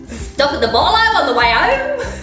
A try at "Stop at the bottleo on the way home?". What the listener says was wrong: Yeah, do it without the really big intonation at the end. Can't you do it without going, ooh?